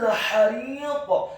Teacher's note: huruf ha-nya dibaca tipis, tarqiq, nyaring dan halus fathah 1 harokat. Huruf ra-nya dibaca tipis, kasrah 2 harokat karena setelahnya ada huruf ya sukun.